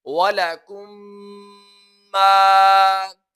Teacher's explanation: मीम साकिन के बाद दूसरी मीम आ रही है, तो यहाँ पर भी इदगाम शफवी किया जाएगा